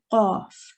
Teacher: the back of your tongue from where it's joined onto your throat, let's say, touches the opposite portion of the hard palate. So the hard palate would be the top of your throat and the back of your tongue.